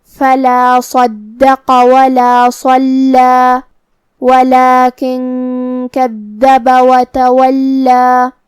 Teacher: ہم اپنی آواز 2 مد کے برابر لمبی کریں گے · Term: مد الف